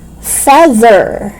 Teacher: so we don't make the mistake of pronouncing th as d no it should be th voiced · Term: voice th